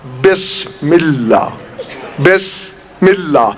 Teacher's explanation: بے کہا لب مل گئے، سین کہا لب کھل گئے، پھر میم کہا لب مل گئے. دو رازوں کے درمیان کھلا ہوا راز ہے سین.